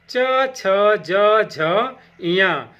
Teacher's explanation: इनका उच्चारण स्थान तालु होता है। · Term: च वर्ग